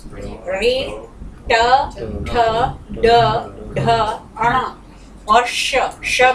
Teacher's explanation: ये मूर्धन्य, पलटती है जीभ, पीछे की तरफ जाती है। रे ट ठ ड ढ अण और श में देखिए पलट रही है।